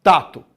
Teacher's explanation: D e T são consoantes que possuem o mesmo ponto de articulação. São duas oclusivas lingodentais, ou seja, são consoantes de mesma produção, produção homoorgânica.